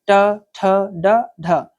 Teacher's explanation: जीभ का जो आगे का भाग है वो कठोर तालु के पिछले भाग को स्पर्श करता हो। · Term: मूर्धन्य